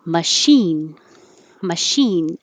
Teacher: it looks like ch but it sounds like sh because it's from french